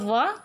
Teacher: दांत और ओष्ठ से निकलेगा व, इसको दंतोष्ठ्य